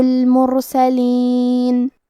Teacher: کلمت المرسلین میں حرف الراء پہ جزم ہے، یہاں را کا حکم ہے تفخیم، ہمیں حرف الراء کو موٹی آواز میں پڑھنا ہے